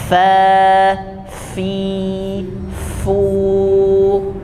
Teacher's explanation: Jadi fa itu gigi seri bagian atas, bisa dilihat di gambarnya, menempel ke bibir bagian bawah, tapi bagian dalam. Jadi jangan di bagian luar. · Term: huruf fa